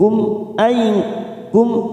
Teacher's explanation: mim sukun bertemu Hamzah Idhar Syafawi kita baca jelas tanpa mendengung